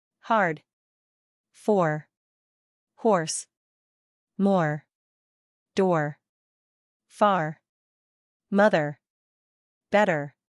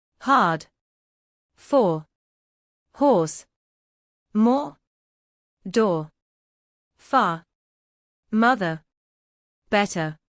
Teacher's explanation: British received pronunciation, non-rhotic drops the R in words like car and butter, unless followed by a vowel.